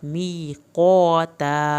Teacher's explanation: می یا ساکن کو آپ نے کھینچ کے پڑھنا ہے، قاف کو موٹا پڑھنا ہے الف کے ساتھ